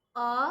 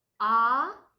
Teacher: अ है तो अ के जगह पर आ बोलेंगे तो उससे डबल टाइम लगेगा। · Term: दीर्घ स्वर